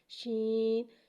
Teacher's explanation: شین میں توشی والی سیٹی کو ظاہر کریں گے اور شین کو ایک الف یعنی 3 مقدار کھینچ کے پڑھتے ہیں۔